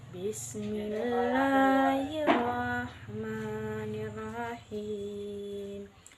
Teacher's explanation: pada kalimat bismi di situ ada huruf ba yang mana makhrajnya ada di dua bibir · huruf sin, yang makhrajnya di ujung lidah bagian belakang gigi seri bagian bawah